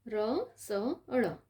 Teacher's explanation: ર સ ળ એનો ઉચ્ચારસ્થાન મૂર્ધા અને પ્રકાર મૂર્ધન્ય.